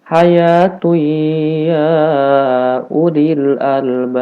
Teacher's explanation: Jadi keluar suara dari hidung, yang itu disebut gunnah. Makanya disebut idgham bi gunnah, karena ketika kita mengidghamkan, ketika kita memasukkan huruf tanwin kepada huruf nun, ini ada dengungan yang keluar dari hidung, disebutnya makhraj khayshum.